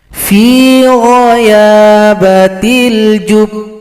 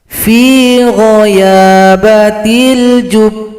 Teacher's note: Kalau berhenti pada huruf ba yang tasydid ini, sukunkan dulu, kemudian qalqalahnya atau pantulannya datang terlambat 2 ketukan